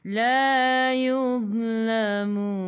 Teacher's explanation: La 2 harakat ada alif mad asli. Yuz masuk ke dalam za zi zu hujung lidah keluar pada gigi depan sikit sahaja. · Matikan dengan huruf nun, hujung lidah menyentuh gusi atas.